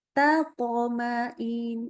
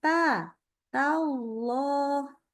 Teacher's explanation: Ya, huruf ta tadi kan sudah disebutkan bahwa huruf ta itu tipis. Baca pangkal lidahnya harus turun. Nah, tapi ini mau ketemu huruf yang tebal.